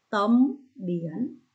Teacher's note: lưu ý cô vần yên, âm cuối N có âm đôi IE nhé.